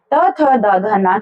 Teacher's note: त थ द ध न के लिए बिल्कुल दांत के पीछे आ जाते हैं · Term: त वर्ग